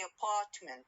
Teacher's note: I stress the second syllable or the second part of the word.